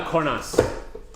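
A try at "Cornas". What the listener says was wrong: No, Corna. You don't pronounce the S.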